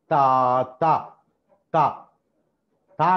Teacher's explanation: తా తా తా తా అన్నప్పుడు గాలిని పూర్తిగా ఆపేసి ఒకటేసారి బయటికి వదిలిపెడుతున్నాం. సో ఇట్ ఈస్ ఆల్వియలార్, తర్వాత ప్లాజివ్. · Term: ఆల్వియలార్, ప్లాజివ్